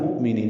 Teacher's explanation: یہ حمزہ ساکن جھٹکے سے پڑھا جائے گا، نی یا مدہ ہے، 2 حرکات لمبا کرنا ہے.